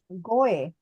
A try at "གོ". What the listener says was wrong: Not go away like just go. There are sounds that are not in your language. For that, that's why I say exaggerate your mouth movement.